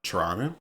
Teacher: She wanted me to clarify that it's actually both T's are not annunciated. So, the way that Toronto natives say it is more like a ch sound.